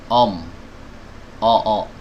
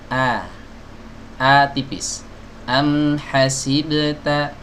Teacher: ketika membaca huruf hamzah yang fathah, jangan sampai kita membacanya dengan tebal